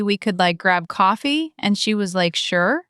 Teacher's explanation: Valley girl. Up talk, filler like. And that rising intonation.